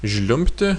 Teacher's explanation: the sound B before T is somehow reduced